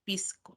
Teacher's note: Debilitamiento de la S como una J suave